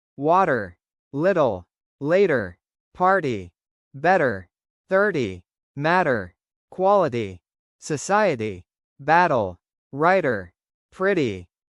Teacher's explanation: When t is between vowels and the second syllable is unstressed, it sounds like a soft d. This is called a flap.